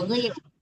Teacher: Ya, membaca ghain ya, jangan gil ya, jangan gil itu jangan disamakan dengan huruf G ya, tapi ghil, agak tebal huruf ghain itu.